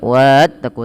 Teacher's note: alif di sini dianggap tidak dibaca. Jadi tidak dipanjangkan juga wattaqu, tapi langsung kata wattaqu.